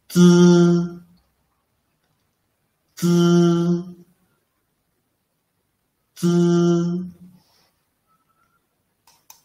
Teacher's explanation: it is produced by initially pressing the tip of the tongue against the back of the upper teeth, then quickly moving the tongue tip backward to leave a channel and let the air squeeze out.